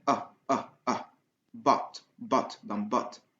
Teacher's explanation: Mais c'est pas exactement O. C'est entre O et A.